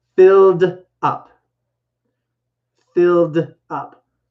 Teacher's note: Because the L is what's called a voiced sound. And regular verbs that end in ed that have a voiced sound, I go from the sound to the d sound. I don't add the ed sound to it.